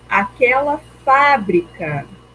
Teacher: Então, fábrica, a sílaba tônica é o fá